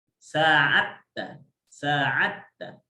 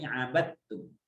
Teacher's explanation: Jadi ini dalnya masukkan ke ta jadi sa'atta. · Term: diidghamkan